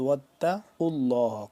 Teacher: تا کے اوپر شد ہے یعنی کہ مشدد ہے تا، بیچ میں الف نہیں پڑھا جا رہا. یہ واو مل رہا ہے تا کے ساتھ، واتقوا اللہ.